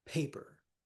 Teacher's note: Paper stresses on the first syllable.